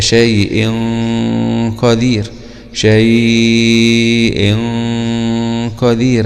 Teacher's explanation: كذلك في هذه الكلمة شيء قدير، هذا تنوين بالكسر وأتى بعده حرف القاف، والقاف من حروف الإخفاء وفي نفس الوقت هو من حروف الاستعلاء، فغنة الإخفاء هنا تكون غنة مفخمة تتبع الحرف الذي أتى بعد حرف القاف